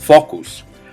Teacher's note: they're just making the O a more pure O sound than we're used to hearing